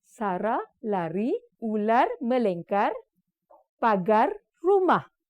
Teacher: Ini adalah disebabkan kesilapan konsonan R itu sama ada mereka tidak menggetarkan, sebab untuk sebut R, hujung lidah mestilah di antara lelangit keras dan digetarkan. Jadi sama ada tidak menggetarkan atau terlebih getaran.